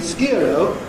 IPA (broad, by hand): s.k.ɪə.r.əʊ